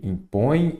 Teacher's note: ela é uma oxítona que a sílaba tônica é a última